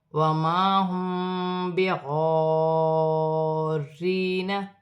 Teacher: میم ساکن کے بعد با رہی ہے، یہاں اخفا مال غنہ کا قاعدہ ہے، چھپا ہوا غنہ کیا جائے گا